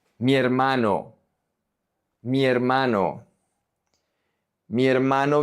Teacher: the I is going to connect to the E. The H is silent.